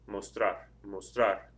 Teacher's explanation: The stress is over the AR at the end of it.